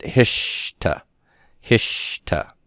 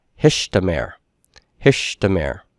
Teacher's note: you're going to have metathesis where the tav of the hith prefix and the root 1 consonant are going to switch places.